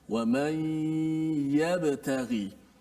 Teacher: Wa man yabtaghi. Huruf ya-nya, makhrajnya di mana? Adalah di tengah lidah.